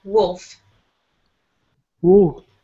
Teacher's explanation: there is an L sound in there, but it's very, very soft